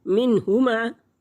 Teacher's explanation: हाँ रूफ़ हल्की में से है और ये हलक के निचले हिस्से से अदा होगा